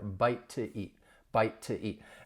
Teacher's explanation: I can link that together with the flap t